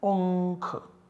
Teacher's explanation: substitutes this anuswara by the savarna of this kha, so the nasal savarna of kha is ng, so we get the output generated unkh.